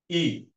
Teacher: জীবের অবস্থানটা উপরের দিকে